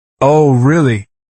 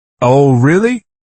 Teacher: A flat, Oh, really? might be genuine interests, but a sarcastic drawn out. Oh, really? Clearly conveys disbelief.